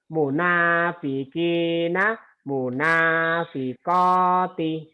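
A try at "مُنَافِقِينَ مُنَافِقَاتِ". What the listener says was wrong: Tapi nanya nggak boleh panjang kalau Quran Munafikina, namuna nyambung ya Pak. Munafiqina, munafiqati.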